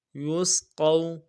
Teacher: قاف واو زبر قو، واو لین ہے نہیں کھینچیں گے، قاف واو زبر قو، یسقو۔